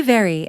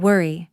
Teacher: Can you hear the difference? One uses the lips and teeth. The other uses the lips in a rounder shape.